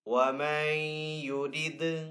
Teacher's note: نون ساکن کے بعد یا حروف یرملون میں سے تو یہاں پہ ادغام ہوگا یعنی کہ ادغام والا غنہ کر کے پڑھیں گے. دال حروف کلکلہ میں سے تو دال کے اوپر یہاں پہ کلکلہ کریں گے.